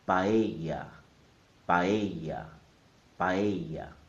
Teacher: The correct pronunciation is in 3 syllables. Pa, e, ya. The stress is on the E sound.